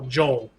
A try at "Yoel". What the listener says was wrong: Nope. The J is a Y.